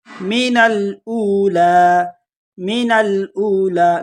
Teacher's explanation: نون کو ڈائریکٹ لام کے ساتھ ملائیں گے، الف بیچ میں سے حذف ہو جائے گا